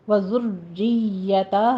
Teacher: را کے پر تشدید ہے، را کسرہ والی ہے، باریک پڑھی جائے گی · پر تشدید ہے، را کسرہ والی ہے، باریک پڑھی جائے گی، یا کے پر تشدید ہے، سختی کرنی ہے، رکنا ہے، تھوڑا سا رک کے پھر آگے جائیے گا